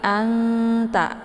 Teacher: itu saling berdekatan ya jadi cara bacanya sama seperti anda ya disamarkan Bunyi nun-nya kemudian siap-siap masuk ke huruf ta ya jadi tingkat kesamaran dan dengungnya itu lebih ke samar ya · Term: Ikhfa aqrab